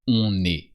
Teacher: don't forget to pronounce the N of on, because then you have a vowel.